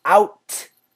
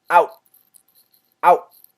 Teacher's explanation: So help out, stop it right at the T. Don't finish the T. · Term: stop sound